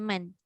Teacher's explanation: Lepas tu man kasaba tu katalah kita sebut man saja. Kita tak akan sebut mang sebab dia tak jumpa kaf. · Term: izhar